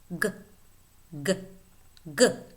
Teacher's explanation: Next, we have the velar voiceless stop, k, k. And then the voiced velar stop